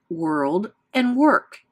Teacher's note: when w comes before o r it will also sound like R such as in world and work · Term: R controlled vowels